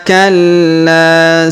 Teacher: kemudian kita dengungkan dua sampai harakat ya tumma tumma Kalla kemudian huruf la kita tahan dan kita tekan kemudian kita panjangkan dua harakat karena di depannya terdapat Alif ya tumma Kalla saufa huruf Sa